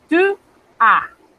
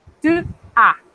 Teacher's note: Noten que la A no, la S, estoy pronunciando solo la A. La S no la estoy pronunciando. Tu, a. Y esa U es como si fuésemos a pronunciar una I, pero tenemos que cerrar la boca más de lo normal.